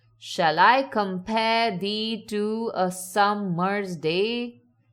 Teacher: This follows something called iambic pentameter, a pattern of 10 syllables alternating between unstressed and stressed sounds.